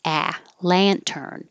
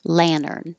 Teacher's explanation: you'll hear people say it without the T Lantern but I think with the t is is more common